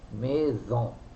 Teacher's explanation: if it comes in between two vowels, like the word maison, house, MAISON, maison, the sound is Z